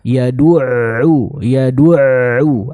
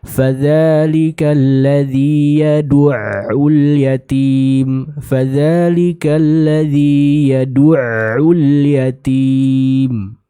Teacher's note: Ada sedikit suara dari huruf ain yang kita alirkan ketika kita membaca huruf ain yang bertasydid ini.